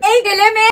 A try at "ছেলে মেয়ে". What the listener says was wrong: তোকে বলছি উচ্চারণটা ভালো করে বল। দেলে মেয়ে নয়, বল ছেলে মেয়ে।